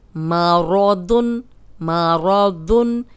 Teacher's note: میم زبر ما، را زبر را، ما را، دو دو پیش دن، مارادن، مارادن۔ را بھی موٹی کیونکہ زبر ہے، دود بھی موٹا تنوین کے ساتھ